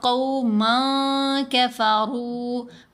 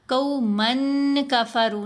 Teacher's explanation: جب نون ساکن یا تنوین کے بعد حروف احفا میں سے کوئی حرف آ جائے تو ہم نے نون کی آواز کو ناک میں چھپا کر بھی پڑھنا ہے اور اس کے اوپر 2 حرکات کی مقدار غنہ بھی کرنا ہے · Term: اخفاء